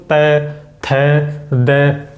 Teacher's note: अपने जो दांत है वो जीभ के टच हो रहे हैं, इसलिए इन्हें दंत्य वर्ण बोला गया है